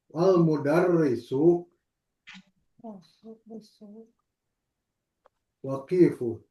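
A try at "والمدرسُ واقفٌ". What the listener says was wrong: Wa-nya panjang.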